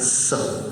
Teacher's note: स में दांतों के बीच जीभ लगाकर स